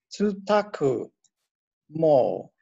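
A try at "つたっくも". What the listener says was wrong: So the tsu, it's hard to see, but it's actually a small tsu, so he's like, tsutaku.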